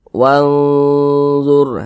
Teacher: Bunyi nun sukunnya disamarkan, didengungkan selanjutnya. Kita baca wanzur, seperti itu. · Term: ikhfa hakiki